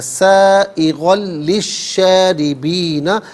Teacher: شاربین میں را کے نیچے زیر اسے باریک کر کے پڑھا جائے گا